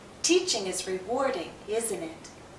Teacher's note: when we're simply commenting the pattern often is to have falling intonation our voice goes down